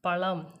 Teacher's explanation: சிறப்பு லகரம் உச்சரிக்கும் பொழுது நாக்கை நல்லா உள்ள மடக்கி லா சொல்லுவோம் அதனால இதை சிறப்பு லகரம்ன்னு சொல்றோம் அதுல வர்ற மாதிரியான வேர்டு வந்துட்டு பழம் · அந்த லா வந்து நல்லா நல்லா நாக்கை மடக்கி சொல்றோம்